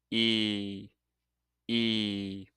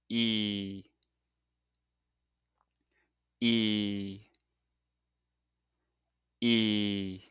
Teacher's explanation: When you make this sound, your tongue is higher and further forward in your mouth and the lips are stretched. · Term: E sound